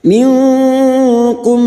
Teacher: Nun sukun bertemu kaf ikhfa hakiki, kita samarkan bunyi nun sukun dan mendengung selama 3 harokat.